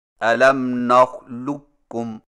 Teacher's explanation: قاف کی آواز کو بالکل ختم کر کے صرف ایک کاف مشدد سے پڑھیں، یعنی اس طرح الم نخلقکم، اس کو ادغام تام کہتے ہیں۔